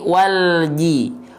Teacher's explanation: Jangan memantulkan huruf lam karena huruf lam nggak punya sifat kolkolah. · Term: lam sukun